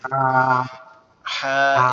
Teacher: এটার আওয়াজ হবে কি গলা চেপে গলার মধ্যে একটু চাপ দিয়ে হবে হা এভাবে। হা এভাবে।